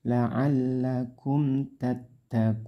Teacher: Taknya ditekan, kun panjangkan 6 harokat atau 3 alif. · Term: mad arid lisukun